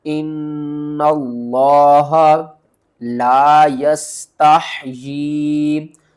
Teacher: اس نون کو لفظ اللہ کے لام سے ملائیں گے، لفظ اللہ سے پہلے زبر ہے، اس کو موٹا کر کے پڑھیں گے۔ ان اللہ لا یستحیی، لام الف زبر لا، یا سین زبر یس، تا حا زبر تح، یا مد کھڑی زیر یی، لا یستحیی۔